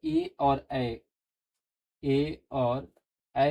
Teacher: ए और ऐ का उच्चारण जो है कंठ और तालू से होता है